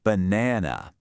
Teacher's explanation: We emphasize that middle syllable, so the first A gets lazy. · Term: schwa